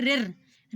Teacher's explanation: रिर को हमारी जीभ थोड़ा जोर देकर बोलेगी, इसलिए ये मूर्धा में आता है। और पांचवा आता है दंत, यानी जिसको बोलने में हमारे दांतों का उपयोग हो।